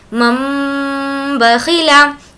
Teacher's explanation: تو اس کا رول یہ ہے کہ نون ساکن کے بعد یا تنوین کے بعد اگر با آئے تو نون کی آواز کو، نون ساکن میں تو نون کی آواز ہوتی ہی ہے، اور ہمیں یہ بھی معلوم ہے کہ تنوین میں بھی نون کی آواز ہوتی ہے، تو نون کی آواز کو میم سے بدل دیں گے اور غنہ اور اخفا کے ساتھ پڑھیں گے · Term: اقلاب